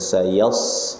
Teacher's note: Bukan ke shin ya, sayash itu shin, mundur. Kalau sod sama sin tetap sama dia di ujung lidah. Ya sama, sayas cuma tebalkan saja pangkal lidahnya.